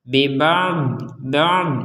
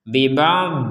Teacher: Ain itu di tenggorokan Dod itu di lidah jadi dari tenggorokan ke lidah bib' ba Nah jadi dari bawah ya dari tenggorokan ke lidah